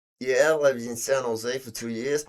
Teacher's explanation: My voice is rising at the ends of both those statements but I'm not asking a question. That's uptalk.